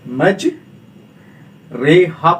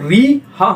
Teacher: رائے ممالہ باریک اور مجہول پڑھی جاتی ہے، اس کو ہم معروف نہیں پڑھتے ہیں